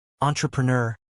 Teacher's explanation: with the stress on the last syllable